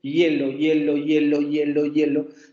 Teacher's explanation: Pero si ustedes pronuncian esta palabra muchas veces, hielo, hielo, hielo, hielo, hielo, se van a dar cuenta que al principio de esta palabra no hay una I, sino hay un fonema que se parece mucho a una Y. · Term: fonema aproximante